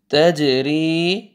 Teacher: زبر جیم جزم تج را زیر یا جزم ری تج ری جیم قلقلہ ٹھیک ہے ڈبل ساؤنڈ آئے گا